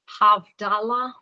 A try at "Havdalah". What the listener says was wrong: Okay, Havdalah. Perfect.